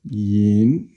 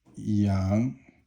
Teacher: yin is first tone, yang is second tone